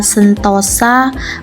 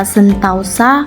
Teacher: bunyi O berubah menjadi bunyi AU, diucapkan dengan kata sentausa.